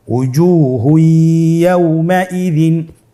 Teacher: এখানে আমাদেরকে যেটা করতে হবে তানবিনকে পরবর্তী হরফের সাথে মিলিয়ে গুন্নার সহিত পড়তে হবে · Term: ইদগামে বাগুন্না